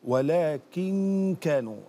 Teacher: أنت فقط شميت الغنى شما عند الكاف